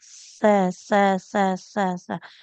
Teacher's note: ditempelkan ujung lidahnya ke ujung gigi atas